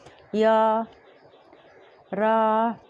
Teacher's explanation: य बोलते हैं तो हमारा जो जीभ है किसी भागों को स्पर्श नहीं करती है, ना ही तो रगड़ खाती है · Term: अंतस्थ व्यंजन